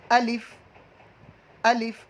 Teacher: الف جوف دہن یعنی منہ کا خلا، الف جو ہے یہ منہ کے خالی حصے سے ادا ہوتا ہے